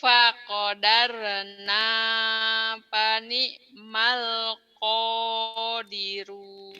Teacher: Bagus, cuman ainnya aja kurang kurang neken ya, ainnya. Kurang keselak nih